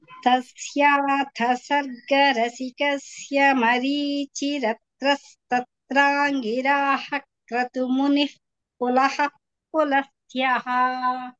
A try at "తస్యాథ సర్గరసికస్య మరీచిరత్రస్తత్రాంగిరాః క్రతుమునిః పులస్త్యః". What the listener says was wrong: ఇక్కడ సమస్య ఏంటంటే మీరు చెప్పలేకపోవడం కాదు, ఆ వేగాన్ని ఉపసంహరించుకోలేకపోవడం. అదే వేగాన్ని అట్టి పెట్టుకున్నారు, కొంచెం ఇంకా తగ్గించాలి. వేగం తగ్గించే కొద్దీ కూడా స్పష్టత వచ్చి తీరాలి. ఎందుకంటే అక్కడ మీరు కొంచెం వ్యవధానం ఇస్తారు కదా, ఆ సమయంలో అక్షరాలని కొంచెం చూసుకుని నెమ్మదిగా వచ్చేస్తాయి అవి. కొంచెం వేగం తగ్గించండి.